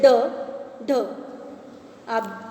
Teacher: जिन व्यंजनों के उच्चारण में जीभ ऊपर उठकर झटके से नीचे आ जाती है उक्षिप्त व्यंजन कहलाते हैं।